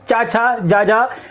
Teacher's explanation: चा, छा, जा, झा, अगर इनका चा, छा, जा, झा का तुम उच्चारण करोगे तो इसमें तुम्हारी जीवा बिल्कुल भी नहीं मुड़ेगी और तालु से टकराएगी,